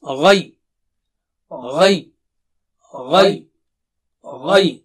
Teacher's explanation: So gha is thick and high, and ya is thin.